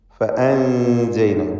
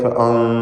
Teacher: ഇഖ്ഫാ ഹഖീഖി നൽകി മറച്ച് മണിക്കുക. മണിക്കലിൽ തർക്കീഖാണ്. ഫഅൻജൈന. ചിലർ തെറ്റായി ഫഅൻ എന്നിങ്ങനെ ചുണ്ട് കൂർപ്പിച്ച് പറയും.